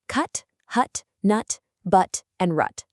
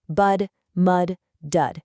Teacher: the sharp abrupt t in the UT family